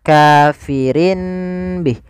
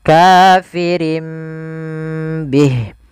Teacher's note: Karena di sini ada tanwin bertemu dengan ba, itu biasanya kita hukumi dengan bacaan iqlab. Iqlab itu mengganti suara nun menjadi suara mim.